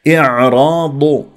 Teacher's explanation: الضاد مفخمه مرتبه ثالثه لانها مضمومه